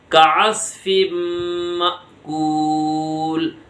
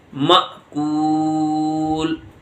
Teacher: معقول نہیں بولیں گے بلکہ اس میں جھٹکا دیں گے